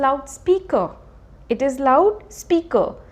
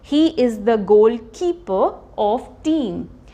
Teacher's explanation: जब भी आर हमारा एंड में होगा, फाइनल पोजीशन में होगा, वो ब्रिटिश इंग्लिश में हम उसको स्ट्रेस नहीं करेंगे